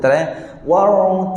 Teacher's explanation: ra yang fasih dia tak bergetar banyak kali dia tak bunyi War Ra kalau bergetar banyak kali tak fasih